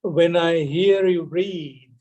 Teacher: this subordinate clause or the dependent clause is usually articulated with rising tone